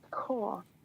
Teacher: it looks like corpse, but it's actually pronounced core. The P is silent. It's a French word, if I remember right, and that's why the P is silent.